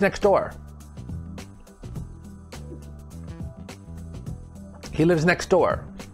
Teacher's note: so we drop the t sound it just sounds like next door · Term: disappearing sounds